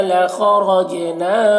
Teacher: جیم میں قلقلہ ہوگا، جیم کو پڑھتے وقت اس کی آواز مخرج سے ٹکرائے گی